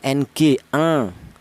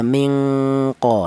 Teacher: dengung lebih dominan daripada samarnya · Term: ifa adna